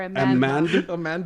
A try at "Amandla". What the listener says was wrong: Like Amanda, but add an L between the D and the. There's a D. There's a D in there.